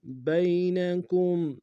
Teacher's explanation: یا لین بغیر کھینچے پڑھیں گے